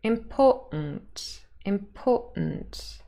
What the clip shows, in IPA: ɪmˈpɔː.ʔnt